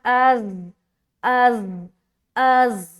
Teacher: अज़ सीटी की तरह और सख्ती के साथ, अज़ अज़ अज़, वाजहुन्ना, वा में एक अलिफ खींच रहे, जहुन्ना, यहाँ पर नून मुशद्दद का गुन्ना।